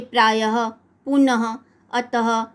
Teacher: यदि अनुस्वार की तरह विसर्ग भी स्वर के बाद आता है तो इसका उच्चारण हल्के ह की तरह होता है